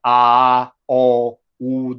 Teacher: A, o, u, they are back vowels, and they are layered. They are, you know, like low, mid, and high back vowels.